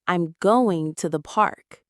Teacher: The unstressed words are I am to the. So naturally it sounds like I'm going to the park.